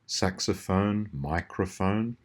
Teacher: in all of those cases, the O in the middle is the schwa, and the rest of it makes a proper vowel sound.